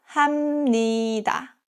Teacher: If a syllable ends with a P sound, like 비읍 or 피읍, and the next syllable starts with 니은 or 미음, the P turns into M sound.